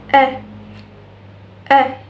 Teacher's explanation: The tongue is low and the front part of the tongue is raised. A. And the lips are unrounded.